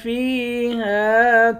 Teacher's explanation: فا کو یا کے ساتھ ملا کر یا کو ایک الف کے مقدار کھینچ کر پڑھیں گے، یا حروف مدہ ہے۔